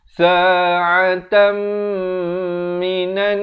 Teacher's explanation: Di sini didengungkan 2 harakat daripada sa'atan jadi tam. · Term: dengung 2 harakat